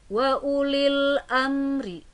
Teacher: Wa ulil amri, ada mim mati bertemu dengan ro, ada mim mati bertemu dengan ro, maka berhukumkan izhar syafawi karena mim mati bertemu dengan huruf ro dan cara membacanya harus jelas, tidak boleh ditahan atau didengung